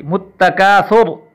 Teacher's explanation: اسی طرح متکاثر کی را جو ہے حالت وقف میں اگر ہم کریں گے تو را ساکن ہو جائے گی اور موٹی پڑھی جائے گی